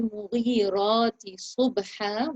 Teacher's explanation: with the ra lifted up because the vowel is above it